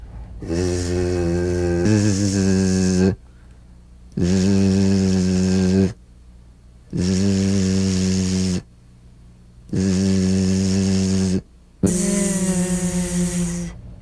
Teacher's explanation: It's in that little space that the Z sound is formed. So feel a smooth, strong vibration in the teeth and in the front of the tongue